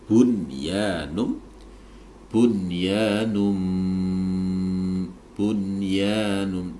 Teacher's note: nun sukun bertemu dengan ya ini tidak boleh didengungkan tapi wajib dibaca izhar wajib